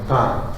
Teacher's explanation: Vous voyez que le A a tendance à devenir presque un E avec la nasalisation.